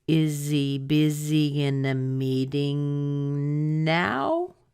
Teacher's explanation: I need to go up because I know it's going to end as a question